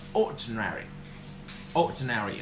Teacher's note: this word stress always falls onto the first syllable